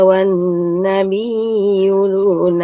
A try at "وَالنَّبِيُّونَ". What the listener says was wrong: والنبيون jadi bukan wan nabiyuna. Kalau gitu kan bi, mbaknya jadi panjang. Wan nabiyuna, tapi huruf ya yang kita tekan dan kita alirkan suaranya.